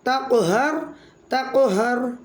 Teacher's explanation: قوف ساکن حالت میں کلمے کے درمیان میں آ رہا ہے تو یہاں قلقلہ صغریٰ ہوگا. پڑھیں گے تقہر، اور قوف موٹے حروف میں سے بھی ہے تو اس لیے ہم موٹا ہی پڑھیں گے اس کو.